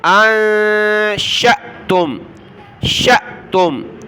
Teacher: حمزہ ساکنہ کو پڑھتے وقت جھٹکا دینا ہے